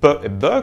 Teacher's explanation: deux consonnes qui sont produites avec les deux lèvres venant bloquer l'air puis en le relâchant soudainement. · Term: consonnes bilabiales occlusives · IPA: [p] [b]